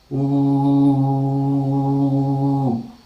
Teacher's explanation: And now we have the eighth cardinal vowel. It is again articulated with back of the tongue, of course very close position and rounded, and we say ooh.